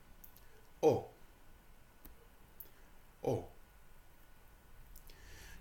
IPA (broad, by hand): ɒ